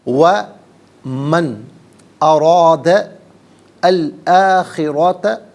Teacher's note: وَمَنْ أَرَادَ الْآخِرَةَ، ارادہ میں را پر زبر ہے، را کو پر کر کے پڑھیں گے، اور ارادہ میں دال پر زبر، اس سے الآخرۃ کے لام ساکن کے ساتھ ملائیں گے، درمیان میں سے الف یعنی حمزہ کو حذف کیا جائے گا۔